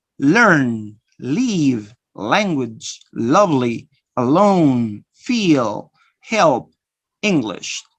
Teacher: passes through the sides of the tongue, lateral sound